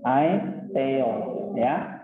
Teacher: Aksen yang pertama acute berarti naik ya. Nah, pitch atau suaranya ditinggikan sedikit.